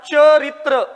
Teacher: म्हणजे इथं च चा उच्चार य युक्त होतो म्हणून हा तालव्य आहे.